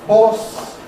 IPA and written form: hɔːs (horse)